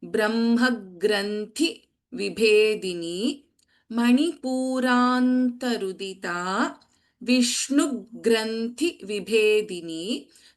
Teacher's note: Tha and bha are Mahapranaksharas in both the lines. · So if you listen carefully, the ga here is getting double.